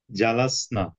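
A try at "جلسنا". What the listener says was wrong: নাতে টান হবে।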